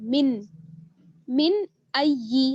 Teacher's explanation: हमजा जो है वो हुरूफ हल्की में से है, इसलिए यहाँ पर इजहार होगा, नून साकिन का इजहार